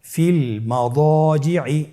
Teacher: দদের উদাহরণ ফিল মাদাজিই। দদের পরে আলিফ হরফটি রয়েছে, এখানে যেহেতু মোটা হরফের আলিফ হরফ রয়েছে তাহলে আলিফটিকেও মোটা করে পড়তে হবে